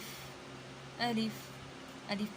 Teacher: الف منہ کے حلی سے ادا ہوتا ہے۔ الف، الف، الف کو ہم لوگ لمبا نہیں کرتے، جھٹکا بھی نہیں دیتے، بلکہ اس کو جلدی پڑھتے ہیں